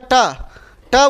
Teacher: ट ऐसा है मूर्धन्य भी है अल्पप्राण भी है अघोष भी है